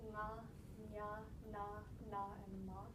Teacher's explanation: the scientific term is like guttural, palatal, retroflexal, dental, and labial. So if you just look at the last letter in each of the rows, it's nga, nya, na, na, and ma.